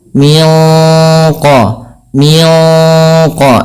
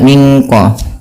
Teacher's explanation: suara nunnya ya disamarkan langsung kepada makhraj daripada huruf qaf yang dia memiliki sifat isti'la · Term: ikhfa hakiki